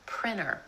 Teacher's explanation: Sometimes in American English, that T just disappears completely. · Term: vanishing T